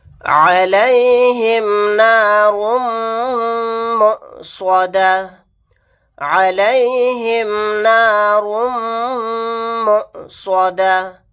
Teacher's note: علیہم نار مؤصدہ، علیہم نار مؤصدہ، میم کے اوپر تشدید ہے، یہاں پر غنہ کر کے پڑھیں گے، حمزہ ساکنہ پر جھٹکا لگا کر پڑھیں گے